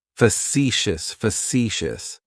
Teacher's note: That first syllable has that schwa, that sound.